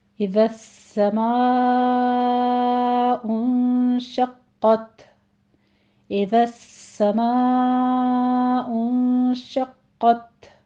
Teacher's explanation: اور شقت میں قوف کے اوپر تشدید ہے، قوف کو پر پڑھتے ہوئے تشدید کے ساتھ یعنی سختی سے ادا کریں گے۔